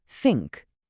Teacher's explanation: Įsivaizduokim, liežuvio galiuką reikia švelniai pridėti tarp dantų arba iškart už viršutinių ir tada tiesiog pūsti orą. Balso stygos čia ilsisi, jos nevibruoja. Turėtų girdėtis tik toks lengvas, švelnus šnipštymas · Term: dusliojo T